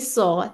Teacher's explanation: आपका मुंह खुलेगा राउंडिंग नहीं है इसमें